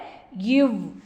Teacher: கீழ் இதழும் மேல்வாய் பல்லும் இணைவதால் பிறக்கும் எழுத்து